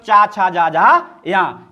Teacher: चा भी तालु है, चा का उच्चारण स्थान भी तालु है, छा का उच्चारण स्थान भी तालु है, जा का उच्चारण स्थान भी तालु है। चा वर्ग में जितने भी वर्ण हैं उन सभी का उच्चारण स्थान तालु है।